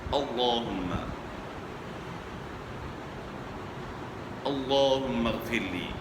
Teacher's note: موٹا ادا کریں گے یہاں، کیونکہ لام سے پہلے زبر ہے، اللہم، اللہم اغفر لی۔